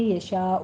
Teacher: یشاء میں مد متصل واجب ہے، یہاں پہ 5 کاؤنٹ کرنے ہیں۔